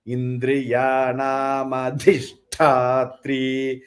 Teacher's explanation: So Dhi is Mahaprana. Tha is also Mahaprana.